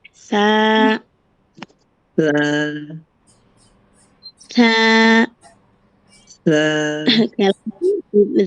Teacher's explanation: জিহ্বার আগা সামনের উপরে, দুই দাঁতের আগার সামনে।